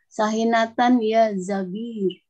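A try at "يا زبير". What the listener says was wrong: Ya, Zubair itu bukan Zabir.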